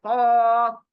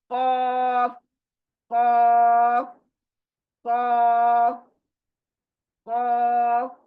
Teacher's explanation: देखिए मुंह के अंदर जो तालू है वो सख्त तालू है, यानी हार्ड, और हलक के अंदर जो जुबान उल्टी लटकी ऐसे नजर आती है छोटी, वो नरम तालू है, वहां से इसको अदा करना है, खौफ। इसकी भी प्रैक्टिस करो बहुत, खौफ।